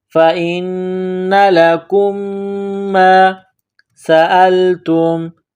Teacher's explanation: میم ساکن کے بعد دوسری میم ہے جو مشدد ہے تو آواز ناک میں چھپائیں گے، غنہ کریں گے